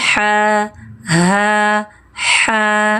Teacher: H, seperti kacamata, dari pangkal tenggorokan. Ha, tenggorokan bagian tengahnya tajam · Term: ha yang tajam